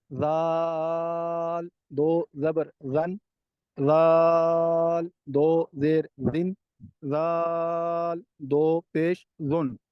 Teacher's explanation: اور زال ہے یہ نرمی سے ادا ہوتا ہے، حروف لساویہ سے ہے